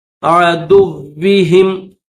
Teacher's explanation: فأیدنا الذین آمنوا علی عدوہم, عدوی دال کو واو کے ساتھ ملائیں گے, واو کے اوپر تشدید ہے تو واو کو سختی کے ساتھ پڑھیں گے.